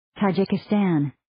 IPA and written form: ,tɑ'dʒikɪ,stæn (tajikistan)